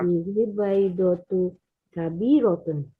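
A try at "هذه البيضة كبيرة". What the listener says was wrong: hadhil baydatu kabiratun. Hadhil baydatu kabiratun. Nah, ya, jangan lupa alif lamnya.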